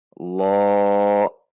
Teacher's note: Pada huruf lamnya bukan dibaca o, tidak dibaca loh atau lo, namun dibaca la dengan lam yang ditegangkan pangkal lidah belakang kita, yaitu berbunyi lo. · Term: lam yang ditafkhimkan